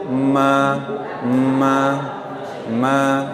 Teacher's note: Huruf mim ini keluar dari pertemuan dua bibir, tapi dia ada huruf yang keluar dari hidung.